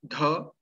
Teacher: so dha is aspirated sound dha which is not there in any of the iranian languages